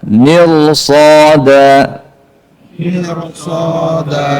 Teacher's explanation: ke atas itu sulit dalam lahjah Arabi maka dibuatlah ketentuan bahwa ketika kondisi setelah ro itu huruf istila walaupun sebelumnya kasrah maka rnya harus dibaca tafkhim